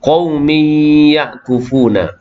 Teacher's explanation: tanwin bertemu dengan ya, memasukkan tanwin ke dalam ya berserta dengung sekadar 2 harakat